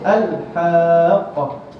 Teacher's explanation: huruf lam tak boleh diqalqalahkan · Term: izhar